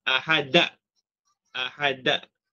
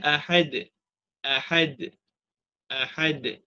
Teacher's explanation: Nombor dua dalam kesalahan ketika membaca qalqalah mengakhiri suara qalqala dengan Hamzah